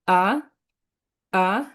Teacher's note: তারপর The second tone is a. 2 number টোনকে rising tone বলে। এটা এটা উপরে যাবে এরকম।